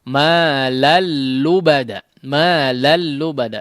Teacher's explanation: Tanwin yang bertemu dengan huruf lam ya. Di sini tidak dighunnahkan. Diidghamkan langsung ya, seperti bertasydid. Malal lubada ya, jangan dipanjangkan, malal lubada ya. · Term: idgham yang tanpa disertai ghunnah